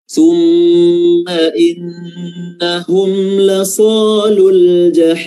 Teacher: summa mim tasydid ditahan lagi karena dia mengandung gunnah ya, mengandung dengung